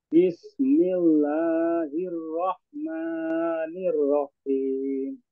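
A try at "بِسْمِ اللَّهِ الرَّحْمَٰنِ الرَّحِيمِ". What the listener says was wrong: Sepertinya masih kepanjangan mad dua harakatnya. Bismillahi. Nah, itu kepanjangan. Bismillahirrahmanirrahim.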